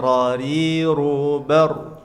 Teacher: Hati-hati huruf ra memiliki sifat tafkhim atau tebal. Kadang dia tebal, kadang dia tipis.